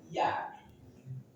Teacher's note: Ada huruf ya tengah lidah ditekan ke langit-langit di atasnya.